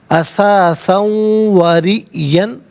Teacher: زبر یا پیش ہو تو پر کر کے پڑھتے ہیں. حمزہ ساکن ہے، جھٹکے کے ساتھ ادا کیا جائے گا.